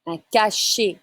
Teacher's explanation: You don't say the T. ET is E sound in French.